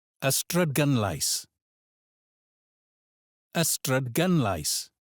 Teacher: The stress here is on gun.